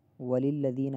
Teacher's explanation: وَلِلَّذِينَ میں ذال کو تھوڑا سا کھینچیں گے، نون کو نہیں کھینچنا۔